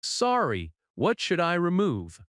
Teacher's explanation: rises at the end because it is a question. In natural American speech, "What should I" can sound like "What should I". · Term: intonation